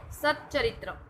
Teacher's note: આ તાલવ્ય વ્યંજન એટલે આપણા તાળવાને અડે છે ત્યારે બેવડાય છે.